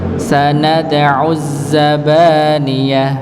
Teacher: sanad'u nggih sama dalnya dipantulkan